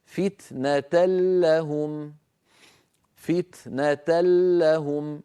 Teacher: فتنه لهم ما بقي من التنوين شيء لا ذاته ولا غنته تحولت النون بجزئيها الى لام وادغال في اللام فصار النطق بلام مشدده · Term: لام مشددة